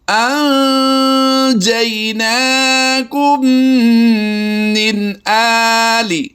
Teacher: اخفا کرتے ہوئے غنہ زمانی کی آواز دیں گے۔ ناک میں آواز کو چھپا کر ادا کرنا ہے، ناک سے آواز لوٹتی ہوئی محسوس ہوگی۔